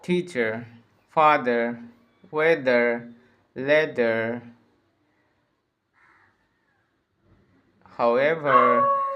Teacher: It's quite it's very much the same as the R sound at the beginning of words and syllables, except for one difference. Your lips don't round out quite as much for the R sound at the end of words and syllables.